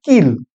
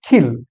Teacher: পালি এবং প্রাকৃতে কুব্জ হয়ে যাচ্ছে খ, কুব্জ। ছিল সংস্কৃততে কিল, এর ক ধ্বনি মহাপ্রাণ ভবন হয়ে হচ্ছে খিল